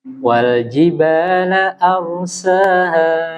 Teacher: huruf ro-nya tebal. A-nya tipis.